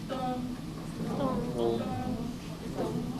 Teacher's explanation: And there's no pitch fall. So you stay high.